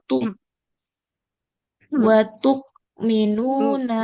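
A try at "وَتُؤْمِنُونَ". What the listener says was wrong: Jangan watuk. Kalau kalau watuk dia seperti kaf nanti. Watu minuna. Betul sekali.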